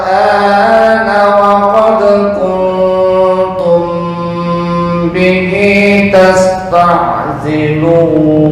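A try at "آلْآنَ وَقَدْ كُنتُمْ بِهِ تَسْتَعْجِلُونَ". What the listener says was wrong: Ji, bukan zi, ji. Nah, ji.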